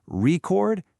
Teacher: Stress the first syllable, record, and it's a thing, a noun.